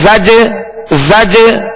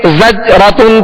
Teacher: اعین اعین اعنابا اعنابا ز جیم زبر زج را زبر را زجر زجر تا دو پیش تن زجرتن زجرتن زجر زجرتن زجرتن، یہ جو آواز لوٹ رہی نا زج زج، یہ جنبش ہو رہی ہے آواز میں. زج جیم کی ادائیگی میں مخرج میں جنبش ہو رہی ہے، جو آواز لوٹتی ہوئی آ رہی ہے اسے قلقلہ کہتے ہیں